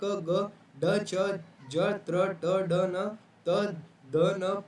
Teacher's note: यह प्राण वायु के कम उपयोग के वजह से अल्पप्राण होता है।